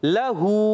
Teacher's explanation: अब लाम पर ज़बर है, इसको नहीं खींचेंगे। हा पर उल्टी पेश है, उल्टा पेश है, इसको एक अलिफ खींचेंगे।